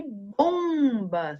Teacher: em destaque né que são as letras m e n é o som sai um pouquinho pela boca e um pouquinho pelo nariz esse som é chamado de som nasal